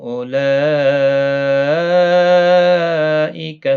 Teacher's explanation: اولئک، یہاں پر مد متصل ہے، چار الف کی مقدار کے برابر کھینچ کر پڑھیں گے